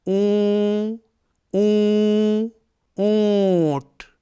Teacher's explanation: اونٹ یا اونچا، اونچا، اونچا، اون، تو اونچا میں یہ جو اون کی آواز ہے یا اونٹ میں یہ جو اون کی آواز ہے، یہ آواز آدھے نون کی ہے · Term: آدھے نون کی آواز